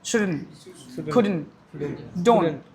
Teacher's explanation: We are not releasing the T